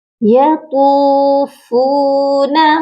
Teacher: طا کو بھی ایک الف کی مقدار لمبا کریں گے، فا کو بھی ایک الف کی مقدار لمبا کر کے پڑھیں گے کیونکہ دونوں کے ساتھ واو مدہ ہیں۔